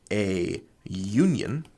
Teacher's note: if you say a union, that produces a y sound, and y is technically a consonant sound